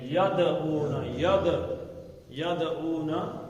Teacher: دال کلکلا ہے. اس کا ایک جھٹکا لگا کے بتائیں گے